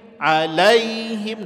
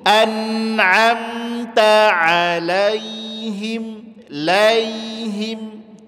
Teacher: Sifatnya lin, dia lembut saja, tapi bunyikan ke huruf I.